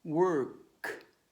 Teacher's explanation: Work, the K doesn't make your vocal cord vibrate. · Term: voiceless sounds